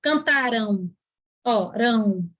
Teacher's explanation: Esse A com esse M aqui, o som tem um Ozinho aí no som. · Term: ditongo fonético